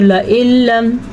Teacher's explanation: لام کی ساتھ لام ادا کریں گے، غنہ بھی نہیں کریں گے، اور نون کی حیثیت ختم ہو جائے گی